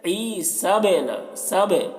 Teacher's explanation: اور اس پر جب جزم ہو تو قلقلہ ہوتا ہے، یعنی با کی آواز ٹکراتی ہے، ڈبل نکلتی ہے ، جیسے عیسبنا، سب، دیکھیے آواز با کی ٹکرا رہی ہے